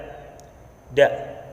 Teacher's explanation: Makhrajnya atau tempat keluarnya punggung ujung lidah, dan pangkal dua gigi muka yang atas. Dan sifat-sifatnya, yang pertama, nafas ditahan, suara tertahan, lidah di bawah, terus terbuka antara lidah dan langit-langit atas, lalu tidak lancar dan hati-hati atau ismat.